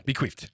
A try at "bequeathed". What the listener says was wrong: No, not an F.